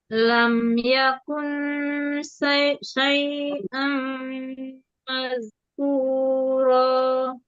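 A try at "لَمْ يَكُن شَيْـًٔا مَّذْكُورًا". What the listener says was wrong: Ya, jangan kebaca sin ya. Jangan syai'.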